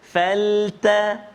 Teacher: Huruf yang kita kena tebalkan bila kita menyebut kalimah faltaqatahu, iaitulah huruf qaf. Pertama huruf qaf, dan juga yang kedua huruf ta. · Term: bunyi tebal